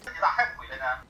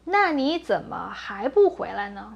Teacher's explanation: the second tone in Dongbei Hua could change to the fourth tone in some cases, like 还、没 and 别, especially in imperative sentences where these characters are being stressed.